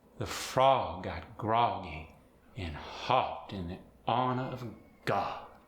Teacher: The O sound in a sentence like, the frog got groggy and hopped in the honor of God, gets that aw sound.